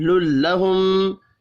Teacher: میم مشدد پر غنہ کریں گے